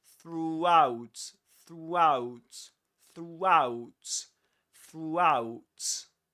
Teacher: And to go from there to out, you end up pronouncing a W sound.